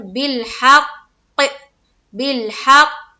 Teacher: कलकला करेंगे और थोड़ी सख्ती लाएंगे, क्योंकि तशदीद में एक किस्म की सख्ती होती है